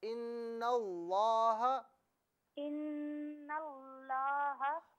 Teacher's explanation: نون کو لام کے ساتھ وضاحت سے ملائیں، جماؤ کے ساتھ